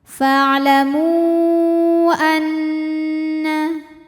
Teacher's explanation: Di mana mad tabi'inya adalah waw sukun didahului dhammah pada kata fa'lamu, sedangkan hamzahnya a pada kata annallaha. Maka mim dipanjangkan, boleh 4, boleh 5 harokat. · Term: mad jaiz munfasil